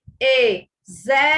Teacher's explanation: Zer é a antepenúltima sílaba. É a sílaba tônica. É uma palavra proparoxítona.